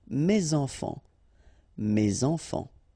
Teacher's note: Enfant, children is starting with a vowel, so you should make the liaison